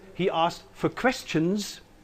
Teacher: the interpretation where the word for is unstressed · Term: weakening